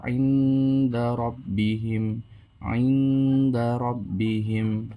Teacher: do th Fa Q Kaf nah cara membacanya adalahar samar jadi menyamarkan antara izhar dan idgham tidak boleh terlalu dengung tidak boleh juga terlalu jelas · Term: Ikfa Hakiki